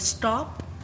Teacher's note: सो in the word स्टॉप there is no aspiration and the T sound is spoken without any her sound.